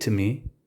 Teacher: When sounds fade or soften, for example, and I asked her to tell me one of the absolute worst pranks she ever did to me, instead of pronouncing to me, the oo sound softens, and we are left with the t.